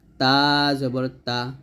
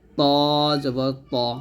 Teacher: দুই হাতের গোড়ার সঙ্গে লাগিয়ে তা এবং ত উচ্চারণ করতে হয় তবে তা টা হালকা করে আমরা উচ্চারণ করব তা জবর তা আর ত টা মোটা করে উচ্চারণ করতে হবে